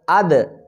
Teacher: حمزہ دال زبر اد، جب آپ اد کہیں گے تو آپ یہ سمجھیں کہ زبان دانتوں کو لگ رہی ہے تو یہ دال کا مخرج ہے۔